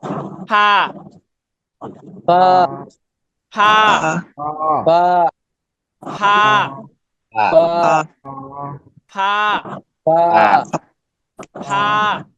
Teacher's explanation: উপরে দুইটা দাঁত নিচের ঠোঁটের উপরে লাগবে, হ্যাঁ পেটে লাগবে